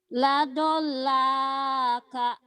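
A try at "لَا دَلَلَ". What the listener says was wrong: itu kamu kaf sama lam ketukar melulu itu lam. Kalau kaf itu ada hamzahnya. Kaf itu ada hamzahnya. Panjang itu ada alifnya ujungnya. La dalala.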